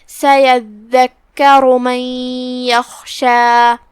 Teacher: خا حروف التفخیم میں سے ہے، مطلب ہم اسے بھاری آواز میں پڑھیں گے. کلمت یخشی کے آخر میں مد طبیعی ہے، 2 حرف کے برابر ہم اپنی آواز لمبی کریں گے